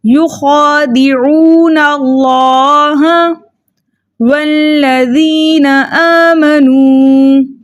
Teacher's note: واؤ کو لام سے ملا کر پڑھیں گے. لام کے اوپر زبر ہے، زبر کو بغیر کھینچے بغیر جھٹکا دیے متوسط طریقے سے پڑھیں گے اور مضبوطی اور جماؤں کے ساتھ پڑھیں گے، کیونکہ لام مشدد میں 2 حرف چھپے ہیں، ایک ساکن اور ایک متحرک.